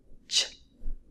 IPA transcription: tʃ